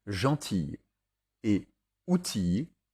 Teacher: gentille et outille, au singulier comme au pluriel, se prononcent i et non il.